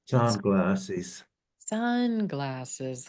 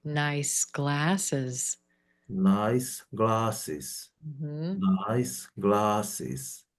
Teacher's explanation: on the compounds, we dropped down very low after the stress